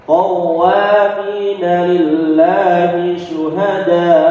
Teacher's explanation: Kalau mad seperti syuhada ini namanya mad wajib muttasil itu ya, namanya mad wajib muttasil. Mad wajib muttasil kalau diberhentikan tetap diperpanjang.